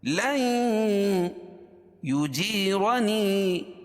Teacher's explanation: نون ساکن کے بعد ادغام مع الغنہ کے 4 حرفوں میں سے یا آ جائے گی تو یا غنہ کر کے پڑھیں گے